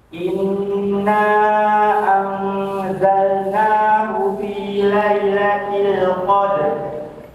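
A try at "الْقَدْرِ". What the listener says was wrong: Tebalkan roknya, qadr. Oh, cedal.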